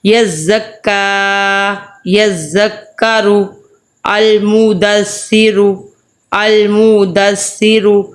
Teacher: اس کو ہم نے زا پڑھنا ہے 2 دانتوں کے سینٹر میں زبان رکھ کے